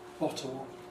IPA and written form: ˡbɒtəl (bottle)